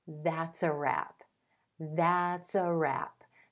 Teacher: To hear that, that's a, that S sound linking over in front of the article